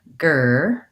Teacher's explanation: Or I also recommend going from the GR sound, gur, and that's holding my tongue back in the position it is for the G sound and tightening it up with the front of the tongue down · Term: back R